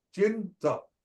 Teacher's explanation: These two words, the first cha is different from the second cha. Chi is alveolar, the second cha is palatal.